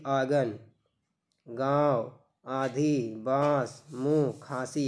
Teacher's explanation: ये अनुनासिक का चिन्ह है, इनका जब हम लोग उच्चारण करते हैं तो जो हवा होती है वो हमारे मुंह और नाक दोनों से निकलती है